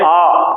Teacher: हमारा मुंह कितना खुला है, यदि मैं इसकी बात करूं तो एक होता विव्रत। विव्रत का मतलब होता पूरा खुला हुआ, जिसके उच्चारण में पूरे का पूरा मुंह खुल जाए।